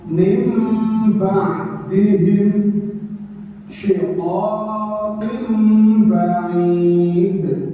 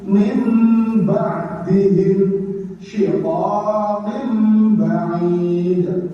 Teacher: ketika ada nun sukun atau tanwin berubah menjadi bunyi mim dengan dengung · Jadi suara nun mati atau tanwin berubah diganti menjadi huruf mim. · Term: iqlab